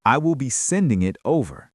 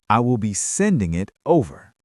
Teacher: I will be sending it over. The stress is on sending.